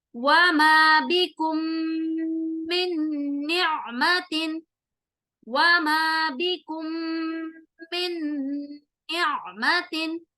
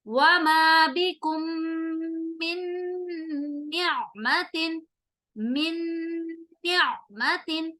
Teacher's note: مدغم کو مدغم فی کے ساتھ ملا دیا اور ہم نے غنہ بھی کیا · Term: ادغام وتھ غنہ